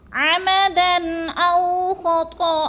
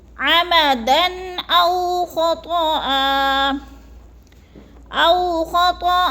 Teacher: عمدن پہ غنہ نہیں کرنا، اظہار ہے، لفظ کو ظاہر کر کے پڑھنا ہے